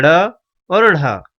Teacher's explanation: इन व्यंजनों का उच्चारण करने में वायु जीभ से टकराकर वापस आती है और फिर बाहर निकलती है। इनका उच्चारण स्थान मूर्धा है, जैसे ड़ और ढ। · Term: उत्क्षिप्त व्यंजन